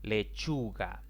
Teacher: lechuga es una palabra en la que la mayor intensidad de la voz recae en la penúltima sílaba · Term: palabras graves